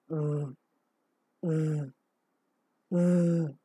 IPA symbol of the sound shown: v